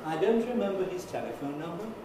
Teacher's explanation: this is my low pitch, I go to a high pitch, then I come down a bit, come right down, and then go up gradually through the remaining syllables